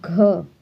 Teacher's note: घ हमारा निकलता है कंठ से